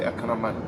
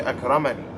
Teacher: With the single kasra, not a long vowel. So when you stop on the single kasra, you say Akraman. If you continue, you would say Akramani.